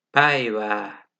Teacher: Ä açık ve yayvan bir ön seslidir